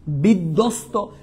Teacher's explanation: উচ্চারণ বহাল রয়েছে কোন নিয়ম দরকার নাই তুমি দেখো তো বিধ্বস্ত এখানে দ এর উচ্চারণ তুমি ডাবল করছো তার মানে বফলার উচ্চারণ বহাল নাই